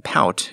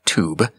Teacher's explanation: the long ow sound in pout goes even lower than the long u in tube